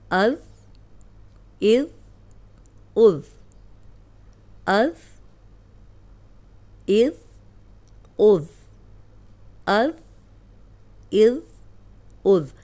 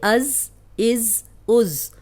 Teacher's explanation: سامنے کے جو دو دانت ہیں ان کے کنارے پہ زبان رکھیں گے تو یہ ادا ہوگا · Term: ذال